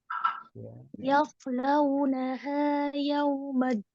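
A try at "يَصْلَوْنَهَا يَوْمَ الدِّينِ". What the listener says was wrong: Nah, haknya jangan jadi ha. Yaslaunaha, naha. Ya, hak memang di bawah, dia kan di sini. Di pangkal tenggorokan. Kalau ha kan dia di sini, tengah tenggorokan. Nah, maka jangan ditukar ya.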